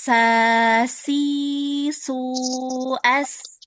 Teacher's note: huruf sin juga dia pangkal lidahnya tidak dinaikkan